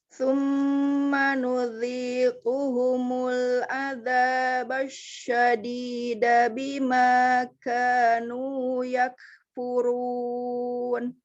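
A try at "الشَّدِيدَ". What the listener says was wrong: Kayaknya memang cenderung tebal huruf shin-nya. Nah, jadi harus lebih tipis. Jadi di sininya turun. Jadi ini shin-nya agak ketebelan. Dia memang menyebar di mulut, tapi jangan sampai dia jadi pangkal lidahnya naik.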